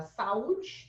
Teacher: eu tenho um encontro de vogais, mas elas estão em sílabas separadas. Então, Isso é um hiato, é a exceção que eu te falei.